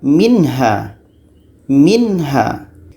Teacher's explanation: zincum in-ha minha jangan kita baca dengan minha itu salah karena izhar halqi tidak dibaca dengan dengung